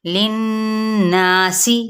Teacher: لناسی، یہاں پہ غنہ ہو رہا ہے، مد اصلی بالالف بھی سین کی زیر کو باریک کرتے ہوئے پڑھیں گے لیکن سین کی سیٹی کو واضح رکھیں